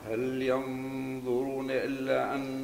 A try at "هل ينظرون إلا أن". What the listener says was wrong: مش ألا إلا إي بين كسر إلا لأن الألف ممدودة حركتين